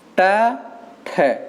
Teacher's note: टा में कम समय लगा, टा अल्प प्राण हो गया, ठ हमारा महाप्राण हो गया। तो पहला वाला अल्प प्राण, दूसरा वाला महाप्राण।